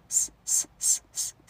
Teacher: 在你的舌尖跟上齿龈当中有很窄一条缝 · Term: 摩擦音